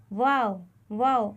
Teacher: اس کا مخرج بھی بہت ہی آسان ہے، اس کا مخرج یہ بنے گا کہ دونوں ہونٹوں کو گول کرنے سے ایک حرف ادا ہوتا ہے، وہ ہے واو